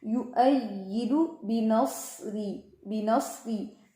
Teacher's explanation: اس میں یا جو ہے مشدد ہے، لیکن اتنی سختی نہیں ہوگی کہ طرف لسان جو ہے وہ دانتوں سے لگے اور اس میں زا کی آواز ہے.